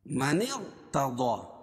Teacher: من ارتضى، ہم یہاں را کو پر کر رہے ہیں، کیوں؟ اس لیے کہ قاعدہ ہے کہ رائے ساکنہ سے پہلے کسرہ دوسرے کلمے میں ہو، یعنی زیر دوسرے کلمے میں ہو، باوجود کہ را کو پر پڑھیں گے۔